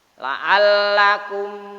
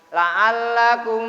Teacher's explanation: Maka melafalkan kalimat mim, huruf mim tersebut tidak ada suatu dengungannya tersebut. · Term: idhar